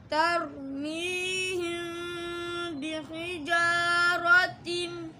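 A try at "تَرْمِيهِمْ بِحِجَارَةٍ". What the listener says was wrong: हल्का सा नाक में गया है, इसको हमने बचाना है। बिहिजारतिम तिम में नाक में लेके जाना चूँकि गुन्ना है। तरमीहिम बिहिजारतिम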